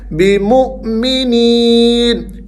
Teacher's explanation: وما هم بمؤمنین، بمؤمنین، یہاں واو حمزہ ساکن ہے، تو ہم نے یہ پڑھا تھا جب حمزہ ساکن ہوگا تو ہم نے اس کو جھٹکے سے پڑھنا ہے۔ بمؤمنین، یا حروف مدہ میں سے ہے تو آپ نے یہاں پر نی کی آواز کو تھوڑا سا کھینچنا ہے۔